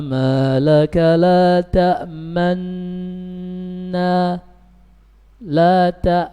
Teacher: ketika membacanya bibirnya itu dimonyongkan hanya sekadar satu harokat dhamma saja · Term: ishmam